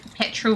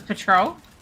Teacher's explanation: The vowel sound is almost the same. The biggest difference is you accenting the first versus the second syllable.